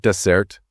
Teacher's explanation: stress on the second syllable that's the sweet thing you eat after your main course